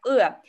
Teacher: Язык отодвинут назад, корень языка мы отодвигаем назад. И как будто нас в живот ударили в живот, и мы говорим открываем рот.